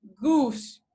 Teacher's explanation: when you say goose your lips are rounded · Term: roundedness